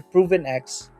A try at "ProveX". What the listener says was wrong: ProveX N, without the N.